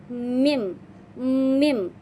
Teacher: dibunyikan dengan mempertemukan dan merapatkan kedua bibir dan nantinya akan digunakan melalui hidung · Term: huruf mim